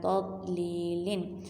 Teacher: تضلیل، لام زیر یا جزم لی، لام کی زیر کو ہم نے یا کے ساتھ ملایا اور اس کو ایک الف کے برابر لمبا کیا کیونکہ یہاں پر یا مدہ ہے، یا ساکن سے پہلے زیر ہے۔